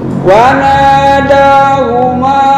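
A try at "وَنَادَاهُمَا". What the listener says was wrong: kurang panjang. Ini 4 sampai 5 harokat. Wanada. Huma. Wanada. Huma.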